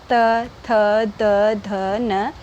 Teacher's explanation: जब हमारी जीभ दांत को टच करती है, दंत को टच करती है, तभी इस तरह के स्वर निकलते हैं